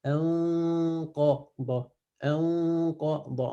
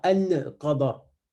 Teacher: Irfa, c'est le fait de cacher le nun dans le qaf.